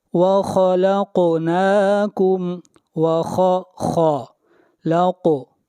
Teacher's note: قاف کے اوپر قلقلہ کریں گے، قاف کو موٹا پڑھیں گے، خا اور قاف یہ دونوں حروف مستعلیہ میں سے ہیں، دونوں کو موٹا پڑھا جائے گا۔